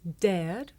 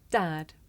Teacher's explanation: some Learners may find it difficult to tell the difference between this sound air and another sound the short vowel ah